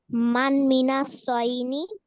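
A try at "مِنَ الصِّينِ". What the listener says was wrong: সয়নি না, সদের নিচে শেষ।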